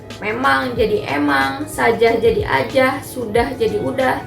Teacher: penghilangan huruf awal atau fonem